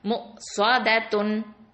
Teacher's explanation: இந்த சாது வந்து ஹெவி, அடுத்தது தால் வந்து லைட்டு.